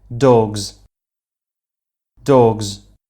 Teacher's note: is a vocal chords vibrate the plural s ends up vibrating as well becoming a z sound